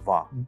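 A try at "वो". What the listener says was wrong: Vo. It's not wa. We don't have a wa in Hindi, actually. It's vo. It's always dental V. Like V. It's V sound.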